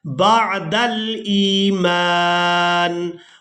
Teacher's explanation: हमजा को या साकिन के साथ मिलाएंगे तो खींच कर अदा करेंगे क्योंकि ये याई मद्दा है